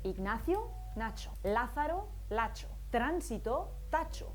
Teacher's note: es frecuente que los sonidos s y z cambien a ch